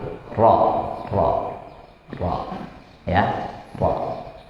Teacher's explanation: Di ujung lidah dan gusi atas agak mundur ya, lebih ke belakang. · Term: huruf ro